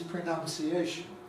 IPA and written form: prəˌnaʊnsiˡeɪʃn (pronunciation)